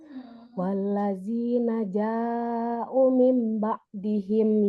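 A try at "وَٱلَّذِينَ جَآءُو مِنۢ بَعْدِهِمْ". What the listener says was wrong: Panjang. Ja'u mim. U-nya juga panjang, 2 harakat.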